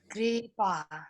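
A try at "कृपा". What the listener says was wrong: Kru is short. Kripa.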